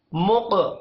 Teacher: قاف ساکن ہے، قلقلہ کرنا ہے اور قاف کو موٹا بھی پڑھنا ہے